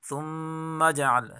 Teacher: ثم میم مشدد گناہ کے ساتھ پڑھا جائے گا، جیم میں قلقلہ ہے